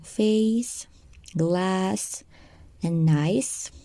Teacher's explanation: The first one, s, with no vibration.